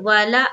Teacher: واو لام دونوں کے اوپر زبر کی حرکت ہے، زبر کو جلدی پڑھیں تھوڑا بھی نہ کھینچے